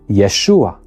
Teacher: a short a vowel is added just before the final a to make sure it is pronounced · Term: helping vowel